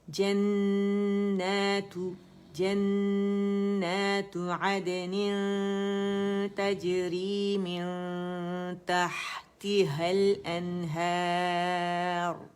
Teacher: را جو ہے یہ موٹی ہو جائے گی, مخفم ہو جائے گی ٹھیک ہے, کیونکہ ہم اسے ساکن کر رہے ہیں اور اس سے پہلے ہمارے پاس کیا آ رہا ہے الف مدہ ہے نا, تو مطلب زبر آ رہی ہے اس سے, یعنی ہیر.